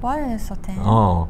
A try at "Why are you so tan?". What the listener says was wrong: 네 잘했습니다.